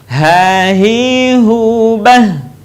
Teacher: Huruf H sekali lagi keluar dari tenggorokan terjauh.